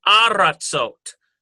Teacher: it changes to aratzot. Ah sound instead of eh.